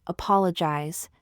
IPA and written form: əˈpɑː.lə.dʒaɪz (Apologize)